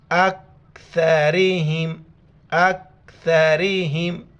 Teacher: چھوٹی کاف ہے باریک کر کے پڑھیں گے اور سا کے وقت زبان باہر نکالیں گے